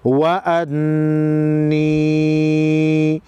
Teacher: نون مشدد کو پہلے زبر حمزہ کے ساتھ ملا کر, دوسری مرتبہ خود یا کے ساتھ ملا کر پڑھیں گے. وَأَنِّي نون مشدد پر غنہ ہوگا.